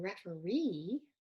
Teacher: referee um now that e right we've totally changed the pronunciation we now have a short e here now the schwa is in the middle